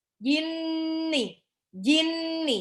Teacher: Kalau nun tasdid, dia punya sifat gunnah. Kalau sifat gunnah itu agak ditahan dia 2-3 harokat.